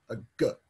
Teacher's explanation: In many languages, in some phonetic contexts, that G would no longer be pronounced G as a hard voiced plosive G. It might get softened a bit.